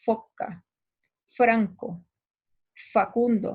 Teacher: Entonces fíjate que feo para pronunciar esas palabras, el labio inferior está chocando con mis dientes superiores. Por eso son labiodentales.